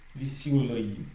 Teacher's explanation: Ici, c'est le yo qui est accentué. Dans n'importe quel mot où vous allez trouver la lettre yo, c'est ce yo qui sera toujours accentué.